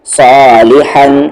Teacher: اس ہا کا مخرج بیچ والا حلق مڈل تھروٹ